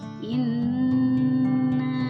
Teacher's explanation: Kemudian selanjutnya dalam kalimat inna ada nun di tasydid, itu disebut dengan gunnah atau dengung. Cara membacanya ditekan inna.